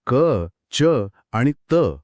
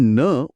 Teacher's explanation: >> अच्छा म्हणजे नाकातून नाद देतो. हो आपण क, च, आणि त उच्चारून पाहिल्यास जाणवेल की हवा फक्त मुखातून बाहेर पडते. पण न उच्चारताना एक विशिष्ट नाद नाकाच्या पोकळीतून येतो.